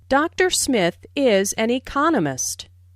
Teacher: notice the stress on economist this content word has new information so it is emphasized there are four syllables in economist with the stress on the